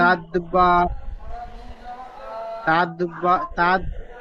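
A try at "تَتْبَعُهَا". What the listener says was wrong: তাদ নয়, তাদ নয়, তাত। তা জবর তাত, আর তা দাল হয়ে যাচ্ছে, তাদ হয়ে যাচ্ছে। তাতবাউহা রাদিফা।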